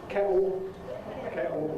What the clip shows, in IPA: ˈkeʔo